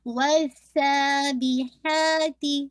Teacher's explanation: ہا کو آپ نے انشاءاللہ مڈل آف حلق سے نکالنا ہے، اور ہا کو 2 کاؤنٹ پڑھنا ہے